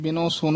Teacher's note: ਆਮ ਜਿਆਦਾ ਬਿਨੋ ਸੁਨੋ ਕਹਿ ਦਿੰਦੇ ਹਨ ਹਾਹ ਛੱਡ ਜਾਂਦੇ ਹਨ।